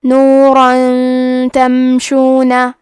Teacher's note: تو ہم تنوین کو چھپاتے ہوئے اور غنہ کے ساتھ یہ حکم کو ادا کریں گے۔ نورن تمشون، کلمت تمشون میں میم ساکن کو ظاہر کریں گے۔ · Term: اخفاء